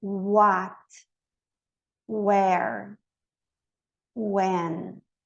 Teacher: O U do W, ele tem que fazer esse U bem redondinho